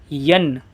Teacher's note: ین بالکل یا ظاہر ہو، ان نہ ہونے پائے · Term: دو زبر